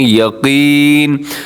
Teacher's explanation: قاف موٹا ہے، اسے یقین نہیں پڑھا آپ نے، یقین. اور وقف کریں گے تو آخر میں نون ساکن ہو جائے گا.